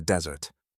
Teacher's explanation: when I said the word desert, the stress was on the first syllable